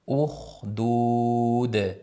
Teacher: Ukhdud bu joyda ham demak xni sirg'altirib oxirgi dni yoyib aytamiz. Ukhdud dudu bo'lib qolmasin. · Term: qalqala